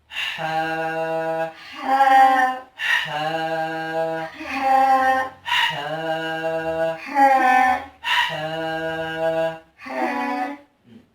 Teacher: हा की आवाज हलक से निकलती है, इसको हम हलक से अदा करेंगे।